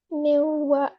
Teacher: So over here, it's alif with the zabar before it. So we have to stretch the vowel oh sound a little bit more